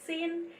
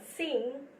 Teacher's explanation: Sin ends in the alveolar nasal n, and sing ends in the velar nasal ng.